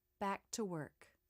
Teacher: back the two words flow together more easily making it smoother notice I do make a Light release of the K in the word work